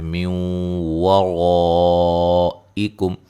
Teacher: نون ساکن کا ادغام مع الغنہ ہے